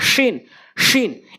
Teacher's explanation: শিন অর্থাৎ জিব্বার মাঝখান উপরে তালের সঙ্গে শিন, শিন। এরপরে 3টি করে নোক্তা একটু খেয়াল করবেন।